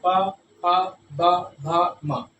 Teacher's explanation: ठीक है, और ये ओष्ठ है, कंठ, तालु, मूर्धा, दंत, ओष्ठ, ये ओष्ठ वर्ण, यानी इनको बोलने पर ओष्ठों का प्रयोग होता है। ओष्ठ एक दूसरे से टकराते, प, फ, ब, भ, म, है ना, बोल के देख लीजिए।